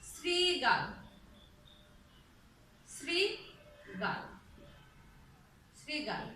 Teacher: যদি তালব্যর সঙ্গে রি ল যুক্ত হয় তাহলে ইংরেজি এস এর মতো উচ্চারণ হয়